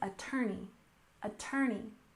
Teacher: We stress the second syllable in this word, attorney, attorney